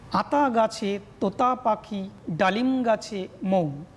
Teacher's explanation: আতার আয়ের উপর, অর্থাৎ আ যে মুক্তদল, এই মুক্তদলের উপর একটা শ্বাসবায়ুর আঘাত বা ঝোঁক পড়ছে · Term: শ্বাসাঘাত